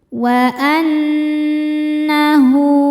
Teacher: Nunnya dihukumi gunnah musyaddadah karena nun bertasydid. Cara bacanya berdengung, tahan dengungannya kurang lebih 2 harokat.